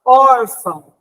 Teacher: nós vamos dizer que é uma palavra paroxítona porque o or é o mais forte